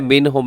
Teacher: اظہار کا مطلب یہ ہوتا ہے کہ آپ نے غنہ نہیں کرنا بلکہ تیزی کے ساتھ آپ نے اس نون کو ادا کر دینا ہے